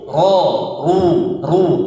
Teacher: Ro tebal. Ro yang berharokat fathah dan dhammah itu dibaca tebal seperti o.